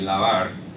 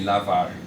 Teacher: The letter V, like I'd mentioned, is also realized as a bilabial approximate in Spanish. In Portuguese, however, the labiodental fricative is used as in English.